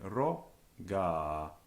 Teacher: it's got a long vowel on the end, short at the beginning